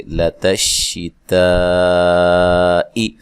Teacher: شین کو ادا کرتے ہوئے آواز جو ہے وہ منہ میں پھیل جاتی ہے